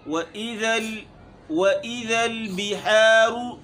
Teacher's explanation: بیحا باریک اور را کے اوپر پیش ہے چونکہ یہاں موٹا ہوگا